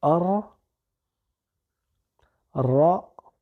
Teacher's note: Par contre, notre lam ne va pas se prononcer parce qu'il est suivi d'une lettre solaire qui se dédouble